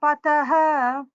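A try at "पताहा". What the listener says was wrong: That Pataha, in Mahaprana, you are trying the Mahaprana. That Mahaprana should come a little more as Mahaprana.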